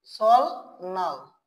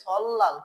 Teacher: রিউল বাচ্চিমের পরে যদি নিউন আসে, রিউল এবং নিউন দুইটা বর্ণের উচ্চারণে কি হয়ে যায়? ল হয়ে যায়।